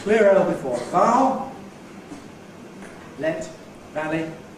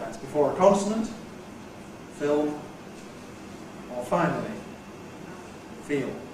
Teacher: You remember in RP we use clear L before a vowel, let, valley, dark L elsewhere. That's before a consonant, film, or finally, feel.